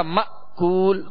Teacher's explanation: حمزہ میں ویسے بھی اس میں سختی ہے، جھٹکا ہے، اور اس کو ضغطہ کے ساتھ یعنی جھٹکے کے ساتھ ادا کیا جاتا ہے · حمزہ ساکنہ، وہ حمزہ جس کے اوپر جزم ہو، سکون ہو، اس سے پہلے والے حرف کے ساتھ جب ملے گا تو جھٹکا دے کر ادا کریں گے